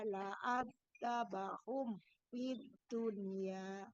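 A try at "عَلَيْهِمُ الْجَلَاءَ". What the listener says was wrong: Ulangi, bukan A tapi ain. Alaihimul. Ya, ulangi.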